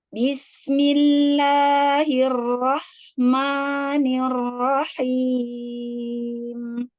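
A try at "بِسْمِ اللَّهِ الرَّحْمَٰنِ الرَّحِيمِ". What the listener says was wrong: Masih tebal. Masih ma. Tipis. Tipis.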